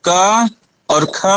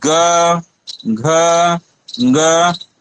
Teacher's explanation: क और ख में हमें क्या दिखा, इसमें हमें अघोष दिखा, और ग घ ग इसमें हमें घोष दिखा